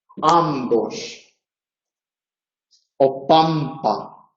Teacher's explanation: Entonces, si la consonante que sigue es labial, puede ser bilabial o labiodental. Si es bilabial, la N se convierte a su vez en bilabial. Y entonces decimos y escribimos ambos o pampa, por poner un ejemplo americano también.